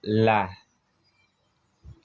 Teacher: Dan yang kelima ada hafal al-lisan min jihah al-yumna, yaitunya tepi lidah bagian depan dekat langit-langit. Hurufnya ada la.